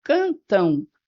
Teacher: Esse M tem som de U, porque eu falo cantam. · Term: ditongo decrescente